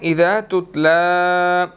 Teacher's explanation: لام کے اوپر کھڑی زبر ہے، 1 سیکنڈ لمبا کرنا ہے